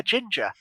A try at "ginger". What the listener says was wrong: You still say it so hard on the J.